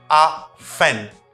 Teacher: Do not pronounce letter T if you are practicing an American accent.